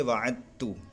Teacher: ہم مخرج ہیں، یعنی دال اور تا کا مخرج ایک ہی ہوتا ہے، تو دال اور تا کا مخرج ایک ہی ہے، اس وجہ سے یہاں پر بھی ادغام کریں گے، یعنی دال کا تا میں ادغام کر دیں گے، دال کو تا سے ملا دیں گے، تو پڑھیں گے وعدتو۔